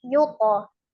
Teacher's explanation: Karena to adalah hurufnya tebal, maka pantulannya juga ngikut tebal. Jadi bukan yute, tapi yuto. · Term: qalqalah